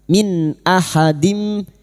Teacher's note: Biha min nun sukun bertemu hamzah idhar halqi. Nun sukun dibaca jelas tanpa mendengung